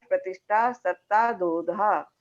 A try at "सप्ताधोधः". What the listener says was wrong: ये जो प्रतिष्ठा है ना, प्रतिष्ठा, एक मिनट, प्रतिष्ठा में जो विसर्ग है ना उसका उच्चारण भी चाहिए, प्रतिष्ठा सप्ताधोधा। हाँ, ये विसर्ग का उच्चारण।